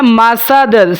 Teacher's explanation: سین کو باریک سیٹی کے ساتھ پڑھیں گے، دال کے اوپر قلقلہ ہوگا، قلقلہ کبیرہ۔